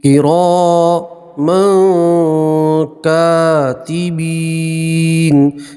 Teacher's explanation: لَحَافِظِينَ، وَإِنَّ عَلَيْكُمْ لَحَافِظِينَ كِرَامًا کاتبین، یہاں تنوین کا اخفا ہوگا، تنوین کو ناک میں چھپا کر گنہ کے ساتھ پڑھیں گے